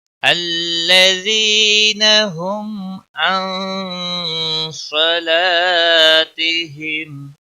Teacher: الَّذِينَ یا مدہ ہے، 1 الف کے برابر کھینچ کر پڑھیں گے۔ ہم میم ساکن کے بعد عین آیا ہے اس لیے میم پر اظہار ہوگا، اس اظہار کو اظہار شفوی کہتے ہیں۔